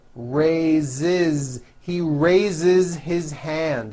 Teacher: So we say I raise with a voiced Z ending, and he raises.